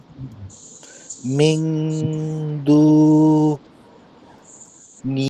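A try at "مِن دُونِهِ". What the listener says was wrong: হ্যাঁ পড়েন, নিটা আর ফাস্ট করেন, হরকতের উচ্চারণ দ্রুত হবে।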